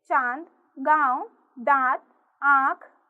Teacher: अ को अनुनासिक कहते हैं। इसका उच्चारण मुख और नाक से किया जाता है।